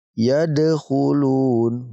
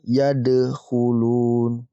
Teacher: Ketika ada huruf qalqalah berupa ba, jim, dal, to, qaf, di sini dal termasuk ya huruf qalqalah, lalu berharokat sukun, maka kita pantulkan, teman-teman. Yadkhulun. Di sini dipantulkan.